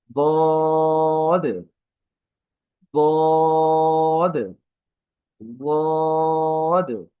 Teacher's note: জিহ্বার কিনারা দাঁতের মাড়ির সাথে লাগিয়ে, অর্থাৎ দাঁতে আমাদের যে মাড়িটা আছে সেই মাড়ির সাথে লাগিয়ে হরফটা উচ্চারণ হয় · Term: ضاد